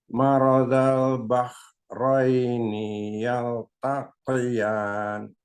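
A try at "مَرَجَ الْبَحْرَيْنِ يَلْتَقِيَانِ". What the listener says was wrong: Ni-nya nggak panjang. Yaltaqiyan.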